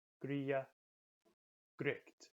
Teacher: most of the time the G between vowels is almost silent